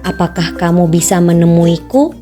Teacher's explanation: intonasi datar naik terdapat pada kalimat tanya